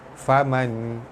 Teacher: nun mati bertemu ta, ikhfa hakiki, dibaca sama-sama nipis serta dengung dua harakat